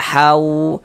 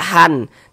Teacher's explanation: bunyi tanwinnya masuk ke huruf wau. Sehingga ini kita baca hau. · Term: idgham bighunah